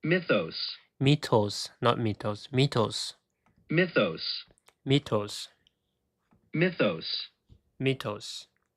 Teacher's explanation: So the stress is in the first syllable, right?